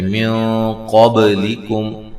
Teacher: یہاں نون ساکن کا اخفا مع الغنہ ہے، موٹا اخفا ہے ، قاف کو موٹا ادا کرنا ہے، با پہ قلقلہ کرنا